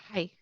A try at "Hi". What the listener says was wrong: A little stronger than that.